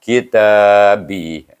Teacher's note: Baca dengan mat asli, dua harakah. Kitabi. Jadi bunyi semua suku katanya ahlil kitabi.